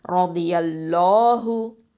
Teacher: ஃபத்ஹா இருக்குது. அதனால் அல்லாஹ் அப்படிங்கிற அந்த லாம் லஃப்துல் ஜலாலாவை நம்ம என்ன பண்ணணும்? தஃப்ஹீமாக உச்சரிக்கணும்.